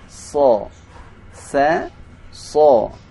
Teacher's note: Maka cara membedakan antara huruf sin dengan huruf sad, ketika kita membaca huruf sin tidak boleh monyong. Sa. Kan tapi pada huruf sad sedikit dimonyongkan.